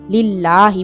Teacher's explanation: खड़ी जबर इसके थोड़ा सा लंबा करेंगे। लिल्लाही, इस लफ्ज को मोटा नहीं पढ़ेंगे।